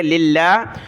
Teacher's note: لفظ اللہ کو باریک کیا کیونکہ لفظ اللہ سے پہلے لام پر زیر ہے